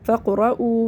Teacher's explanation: واو ساکن سے پہلے پیش ہے، واو مدہ ہے، اس کو ایک الف برابر کھینچ کے پڑھیں گے